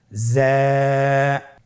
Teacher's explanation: যা হরফটির মাখরাজ আপনারা দেখতে পাচ্ছেন, জিহ্বার আগা সামনের নিচের 2 দাঁতের পেট ও আগার সঙ্গে লাগিয়ে উচ্চারিত হয়।